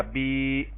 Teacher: یا ساکن سے پہلے زیر کو یا مدہ کہیں گے اور اس کو ایک الف کے برابر لمبا کریں گے